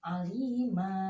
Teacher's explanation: Apabila ada tanwin diberhentikan, ada huruf alif di depannya, maka kita panjangkan, dia terkena hukum mat 2 harokat ya